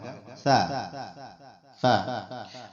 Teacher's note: آپ کی زبان کی آگے جو کنارہ ہے، نوک ہے، یہ ثنایا اولیہ کے بالکل جو نیچے آپ کا کنارہ آ رہا ہے نا، یہاں پہ ٹچ ہوگی تو آئے گا سا